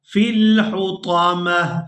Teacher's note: وقف کی صورت میں ہم نے اس ایک آنکھ والی تا کو ہا میں بدل دینا ہے